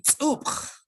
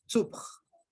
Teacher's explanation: Una tiene glotal y la otra no.